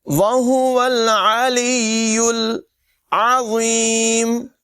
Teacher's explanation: یہاں پر لام کو یا سے ملائیں گے پھر یا کو لام سے ملائیں گے